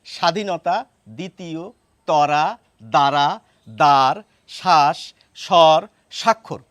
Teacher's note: যদি ব ফলা শব্দের শুরুতে থাকে সেই ব এর উচ্চারণ আমরা করি না